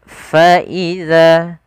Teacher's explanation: Pada lafal faidza lafal fa alirkan nafasnya karena dia salah satu sifat huruf fa yaitu sifat hames yang di mana hames ini mengalir nafas kita. Kemudian faizal dza yaitu di sini bukan zai.